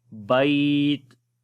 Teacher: تا کے اوپر جب رکتے ہیں پھر شدت اور ہمس دونوں آ جاتے ہیں